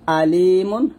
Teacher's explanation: তার মানে আইনটা যখন আমরা বলবো একটু চাপ দিয়ে চিকন করে বলবো